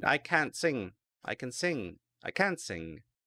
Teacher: the T can't can sometimes be very weak and that can give people the wrong answer